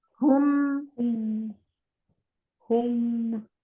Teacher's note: ہو پڑھتے ہوئے ہونٹ گول ہوں گے، میم پڑھتے ہوئے ہونٹ بالکل ریلیکس ہونے چاہیے